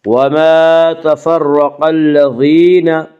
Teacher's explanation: قاف کو پر پڑھیں گے، قاف حروف مستعلیہ میں سے ہے